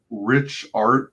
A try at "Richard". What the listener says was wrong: Richard, like it's French. Richard, without the T.